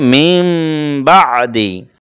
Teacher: যেমন মিম বাদি, মূলত বড় করে লেখা আছে মিন বাদি, কিন্তু মিন তো আমরা পড়বো না, কারণ নুন সাকিনের পরে বা এসেছে, আর উপরে আমরা লিখে দিয়েছি যে এটা নুনটাকে মিম দ্বারা পরিবর্তন করতে হবে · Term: কল্প